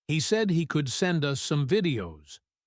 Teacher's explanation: The stress is on send and videos. He is emphasizing the solution, not the problem.